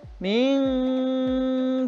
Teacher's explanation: Berikutnya minkum, ada nun mati atau nun sukun bertemu dengan kaf. Berarti lafaz ini mengandung hukum tajwid ikhfa. Cara membacanya samar dan berdengung.